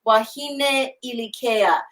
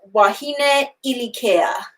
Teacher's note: So what I want to do is make sure that I put that glottal stop before that I. Wahine ilikea.